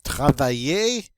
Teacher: This double L is going to be pronounced like a Y, so we come up with travailler, and this word means to work.